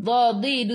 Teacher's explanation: tepi lidah menyentuh gigi gerham atas